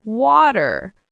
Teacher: In American English, sometimes the T becomes a soft D sound in the middle of a word. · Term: flap T